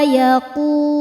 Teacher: Qu hukumnya mad thobi'i zohiri karena ada wau sukun sebelumnya dommah. Cara bacanya panjang dua harakat.